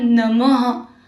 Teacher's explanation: इसका उच्चारण ह की तरह एक हल्की सांस छोड़ते हुए किया जाता है। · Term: विसर्ग